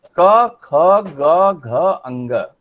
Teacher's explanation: ये ध्वनि जो जिह्वा मूल से निकल रही है। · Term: क वर्ग